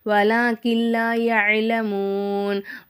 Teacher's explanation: இப்போ வலாக்கில் லா யஅலமூன் வலாக்கில் அப்படின்னு சொல்லும்போது இந்த இடத்துல நமக்கு வந்து இதகம் பிலா குன்னாவுடைய சட்டம் வருது. ஒரு எழுத்தை இன்னொரு எழுத்தோட ஜாயின் பண்ணி குன்னா செய்யாமல் ஓதணும்.